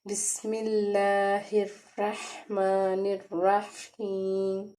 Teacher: را کو ہم نے پر پڑھنا ہے کیونکہ اس کے اوپر زبر ہے